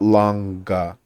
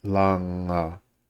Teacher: with this ng sound, there isn't actually a G sound. So it's not longa.